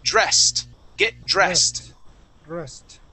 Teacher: this ed ending at the end will sound like a T